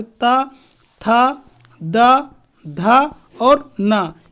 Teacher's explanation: ता, था, दा, धा, ना, इन सभी का उच्चारण स्थान दंत होता है